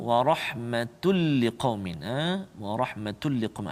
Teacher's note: masukkan lantunan tun itu, tanwin tu ke dalam huruf lam tanpa dengung. Jadi seolah-olah hilang bunyi tanwin tu. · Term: idgham bila gunnah